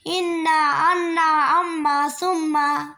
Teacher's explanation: নাকে বেশি হইতে গুণ্য উচ্চারিত হয়